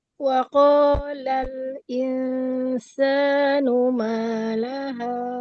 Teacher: >> Okey satu pada lam dia lal lal. Jangan tekan kuat lam ni. Lal sentuhan dia ringan sebab dia tawasul.